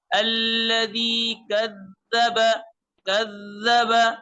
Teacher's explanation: ذال اگرچہ نرم حرف ہے لیکن جب اس پر تشدید آ جائے تو تشدید کا معنی سختی ہے، تو اس میں ذرا سا سختی اور جماؤ وہاں پیدا کرے.